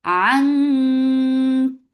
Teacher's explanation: Ain from your throat, fatha upon jaws, and this ikhfa is with kaf.